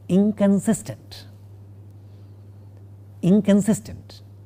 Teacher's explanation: the negative prefix, even though we write as in, is not na, is not a dental nasal. It is a velar nasal, which is like na. · the nasal part of the negative prefix in the word inconsistent is a velar nasal, not a dental nasal, and it is totally unlike how it is written.